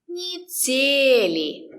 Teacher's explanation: «Е» is not stressed. We pronounce it as «ни». Недели. The stress is on «де».